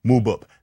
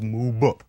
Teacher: when a nice unsuspecting P happens to be between two vowels, it has a voice put into it. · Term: voiced bilabial stop